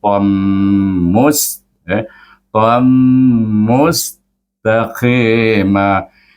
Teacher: bacaannya memang dengung, idgham dengan dengung, dengan gunnah. Jadi mim itu memang bertasydid.